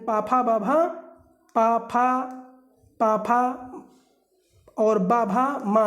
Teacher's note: ओष्ठ व्यंजन जो ओंठों से बोले जाते हैं, जो ओंठों से चिपकते हुए आपके व्यंजन निकलते हैं, तो वो आपके ओष्ठ व्यंजन होते हैं।